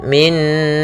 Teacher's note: Min langsung masuk ke Nun yang kedua karena dia gunah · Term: idgham bhunah